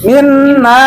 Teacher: Jadi nun musaddah itu 2 harokat.